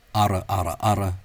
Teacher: this rolled R, or velarized R, has for the most part of Connacht and Munster, just become a tapped R